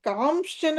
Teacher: పూర్వ పూర్వ అక్షరం మీద అనుస్వారము నకార స్థానంలో శకారము వస్తుంది